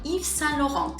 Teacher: we're actually not going to be pronouncing the Ts at the ends of Saint and Laurent